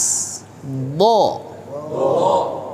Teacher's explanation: huruf do yaitu keluar dari tepi lidah yang menempel pada gigi geraham atas d d ya dari tepinya ini sampai ke ujungnya nah sini